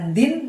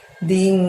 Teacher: bunyi n-nya disamarkan ya teman-teman, bukan din tapi ding